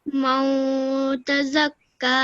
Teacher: this is the rule of ikhfa noon sakin, which means that a nasal sound is produced when you say man tazakka.